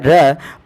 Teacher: इसके उच्चारण में जिह्वा जो है वो घर्षण करती है मूर्धा के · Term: प्रकंपित